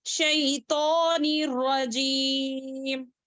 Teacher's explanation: شیطا، الف خنجریہ ہے، اس طریقے سے کھڑا زبر ہے، اس کو 2 حرکات کھینچیں گے